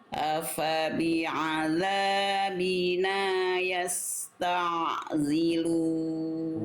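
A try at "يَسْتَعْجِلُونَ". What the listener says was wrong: Jangan zilun, jangan jadi zai. Ji. punya sifat sofir, nggak punya sifat desis. Jadi jangan sampai dibaca yasta zilun, yasta jan jidat ya gitu. Oke, jadi yasta jilun.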